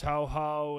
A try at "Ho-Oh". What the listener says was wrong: Did you say Ho-Ho? It's Ho-Oh. It's H-O-hyphen-O-H.